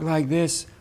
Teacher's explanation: level you remember breathy versus connected if you talk like this with a very breathy voice then there's no output in it there's no vocal quality in it there's also no tone in it